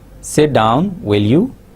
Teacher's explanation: rising tone for example we say sit down will you so will you will be said with the rising tone